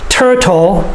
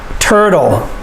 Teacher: if there is a t in the middle of the word we can pronounce it with the t sound turtle but usually we pronounce it with the d sound